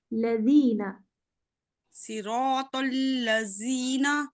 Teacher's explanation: دال میں نرمی ہونی چاہیے. زبان باہر نکلے گی. زبان ایسے زبان نا دانت سے باہر نکلے گی.